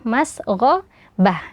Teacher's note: Huruf gho tebal karena berharakat fathah